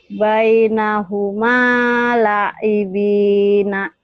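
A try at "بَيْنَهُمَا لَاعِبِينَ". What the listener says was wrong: Lanya panjang. Yuk lagi.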